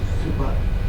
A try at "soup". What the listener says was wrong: No ER on there. Soup.